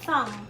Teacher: May B siya pag sinulat, pero pag binigkas mo, silent yung B.